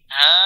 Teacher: Memanjangkan bacaan huruf mat selama 4 atau 5 harokat. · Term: mat wajib mutasil